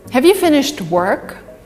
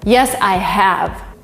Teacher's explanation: So the emphasis is on work here and have is weak. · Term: weak word